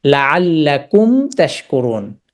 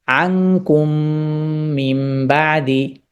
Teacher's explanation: মিম সুকুন টাকে স্পষ্ট আওয়াজে উচ্চারণ করবে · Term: ইজহার